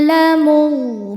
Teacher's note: Huruf ro dibaca secara tafkhim karena berharakat fathah. Cara bacanya ditebalkan. Mun ketika berhenti hukumnya adalah mad arid lukun.